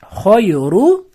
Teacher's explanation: Ru bitta r ni ustida domma bo'lgani uchun yo'g'on o'qiladi.